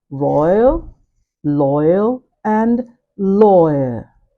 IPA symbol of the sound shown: ɔɪə